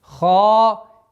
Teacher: Твердое произношение ха с долготой в размере двух огласовок фатха.